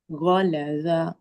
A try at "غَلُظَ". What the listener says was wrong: গলা জ heavy লেটার not জ ভ হুম জ চলে আসছে সাউন্ডটা দ হবে ক্লোজ টু দ এর মতো উচ্চারণ হবে দাদার মতো দ গলা জ